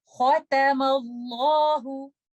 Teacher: the lam in lafzul jalala will be heavy, and we will recite that lam with tafkhim because the letter before lafzul jalala has a fatha · Do not make this tuta heavy, this meme heavy. Only make the lam with tafqim and kha with tafqim. Rest of the letters are all light.